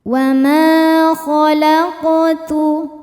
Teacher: ada alif didahului harakat fathah cara bacanya panjang dua harakat wama khalaqtu khalaq huruf qof sukun dihukumi qalqalah sugra karena qof-nya qof sukun dan berada di tengah-tengah bacaan cara bacanya dipantulkan dengan pantul yang kecil w kalaqul. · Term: mad thobi'i